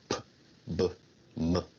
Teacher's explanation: Bilabial sounds are produced with both lips, like P, B, M.